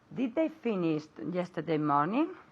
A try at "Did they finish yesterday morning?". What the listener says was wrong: Are you saying did they finished? No T, right? Okay, no T there, okay? Because we have the did, right?